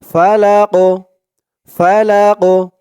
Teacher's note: হবে তো কফে যখন জজম হয়ে যাবে জেরের বদলে তখন এই কফটা কল কলার হরফ হয়ে যাবে একটু ধাক্কা দিয়ে পড়তে হবে কফটাকে